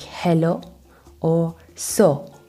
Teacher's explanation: It has a slower pace. The diphthong O or O turns into a shorter O